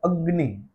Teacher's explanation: ऐसे उदाहरण सुने हैं जिसमें हम अग्नि ऐसा उच्चारण करते हैं तो एक अ है फिर आधा ग है फिर अनुनासिक वाला आधा ग है और न है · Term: यम वर्ण